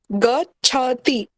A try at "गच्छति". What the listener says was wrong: हाँ, गच्छति इतना सॉफ्ट प्रेम से नहीं बोलना है, गुस्से में बोलिए। और थोड़े गुस्से से। और गुस्से से। आपको गुस्सा ही नहीं आ रहा है। हाँ, च और छ दो अक्षर हैं। गच्छति, छ एकाकी नास्ति।